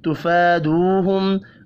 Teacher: فا اور واو مدہ ایک ایک الف کے برابر کھینچ کر پڑھے جائیں گے